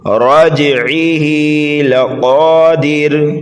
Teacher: قاف کو پر پڑھیں گے اس لیے کہ حروف مستعلیہ میں سے ہے، ایک الف کے برابر کھینچ کر کے پڑھیں گے۔